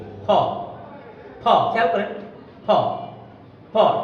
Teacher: যদি আমরা বলি ফ, এই উচ্চারণটা আমরা ঠোঁট দিয়ে করে ফেলি, যেটা আমাদের ভুল হয়। আমরা আসলে ঠোঁট দিয়ে করি, দুই ঠোঁট লাগিয়ে বলি ফ। ফ, খেয়াল করেন, ফ ফ ঠোঁটটা লাগিয়ে বলি, এই জন্য আমাদের ভুল হয়।